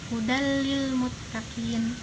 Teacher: Nah, hudal dalil itu adalah contoh bacaan idgham bilagunah, di mana tanwin bertemu dengan lam. Jadi tanwinnya itu dimasukkan ke dalam lam lalu dibaca dengan tidak mendengung.